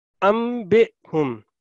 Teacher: नून की आवाज की बजाय मीम की आवाज आ रही है क्योंकि नून साकिन के बाद लेटर बा है। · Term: इकलाब